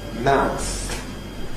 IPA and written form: maʊθ ('mouth')